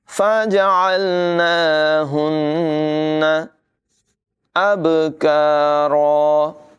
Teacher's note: با میں قلقلہ کریں گے، کاف کی آواز باریک ہوگی، را کو پر پڑھیں گے